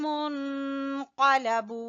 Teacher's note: قاف کو زبان کی جڑ سے ادا کریں گے اور بو کو کھینچیں گے واو مدہ کی وجہ سے